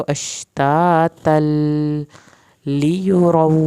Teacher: तातल, इसकी अलिफ पढ़नी है और इसकी तनवीन को लाम के साथ मिलाना है, तो अलिफ नहीं पढ़ा जाएगा